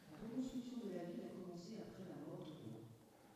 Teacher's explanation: Je crois que c'est tout à fait clair que vous avez un rythme beaucoup plus syllabique. On entend la cadence syllabique. Et il y a beaucoup moins de variations de durée d'une syllabe à l'autre. Et il y a aussi beaucoup moins d'excursions dans le domaine des hautes fréquences.